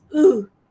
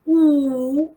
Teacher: Yes, so it is a bit more open, right? The tongue is lax compared to U, which is much tenser, let's say. No firm contact being made between the tongue and the upper molars.